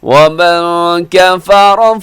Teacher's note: وَمَنْ كَفَرَ، جی یہاں نون ساکن کے بعد کاف ہے تو اخفا کیجیے گا، کفر میں را موٹا رکھیے